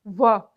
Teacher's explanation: दंतोष्ठ है ऊपर के दांत, निचला होठ